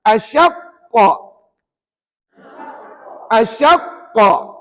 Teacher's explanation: Puan-puan kena break. Ataupun tahan bacaan sekadar satu harakat, lepas tu baru kita bunyikan qalqalah pada kalimah tersebut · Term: qalqalah akbar